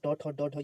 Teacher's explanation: ट ठ ड ढ ये सभी इसका उच्चारण मूर्धा से होता है।